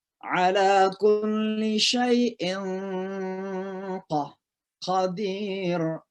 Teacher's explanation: tanwin ketemu qaf, itu namanya ikhfa. Ya, samar-samar baca n-nya